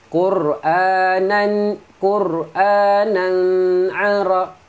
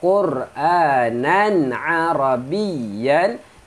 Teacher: Tanwin bertemu ain tak boleh ada dengung. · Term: izhar